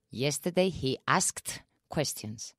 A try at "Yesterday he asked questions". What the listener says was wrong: Yes, yes, yes.